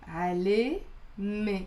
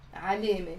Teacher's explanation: it's basically the fatha before the te marbuta that's giving the e sound